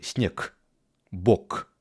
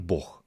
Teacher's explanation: Нават вось гэты, як я вымовіў снег, гэта ўласціва беларускай мове. Г у канцы слова пераходзіць у гук х, а ў расійскай мове на к.